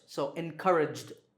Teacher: Here the last sound is J, which is voiced.